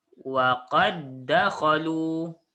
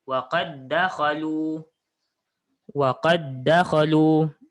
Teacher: Jadi asalnya waqad dakhalu, asalnya baris fathah sahaja. Jadi cara nak baca dia seolah-olah awak buang dal yang pertama ini. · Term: idgham mutamathilain